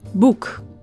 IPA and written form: buk (Boek)